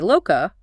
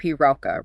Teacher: Old Persian merged L into R.